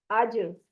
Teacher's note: आपने इसको मखरज पे रख के जुबान को छोड़ देना है, आवाज पलट कर आएगी, हिल जाएगी आवाज। आज, इसको अज नहीं पढ़ना। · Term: कलकला